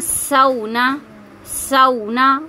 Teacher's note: واؤلین ہے اس لیے میں نہیں کھینچ رہی